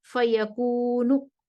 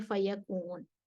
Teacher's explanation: जब वो रुकेंगे तो वक्फ करते वक्त वो 1/3 हरकत अपनी दम्मा वाली हरकत पढ़ देंगे